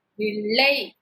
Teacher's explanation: லை நம்ம நடுப்பகுதியை அன்னத்தின் நடுப்பகுதியை போய் தொடும்